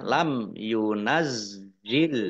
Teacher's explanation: mim sukun bertemu dengan huruf iya bacaan izhar safawi dibaca jelas